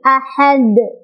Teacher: Jadi dalnya awalnya harokatnya dhammah tanwin, karena kita berhenti membaca maka jadi sukun si dalnya, maka jadilah dia qalqalah, dan qalqalahnya qalqalah besar, ya, qalqalah kubra. Cara bacanya adalah dipantulkan, pantulannya besar.